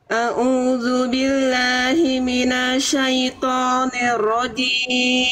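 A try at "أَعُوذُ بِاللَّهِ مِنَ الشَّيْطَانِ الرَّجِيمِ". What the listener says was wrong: A'udzu billahi dari na langsung masuk ke shin Bunda. Jangan sampai shinnya nanya kepanjangan. A'udzu billahi bukan nanya yang dipanjangkan tapi asnya yang ditekan. A'udzu billahi minasyaitonir rajim.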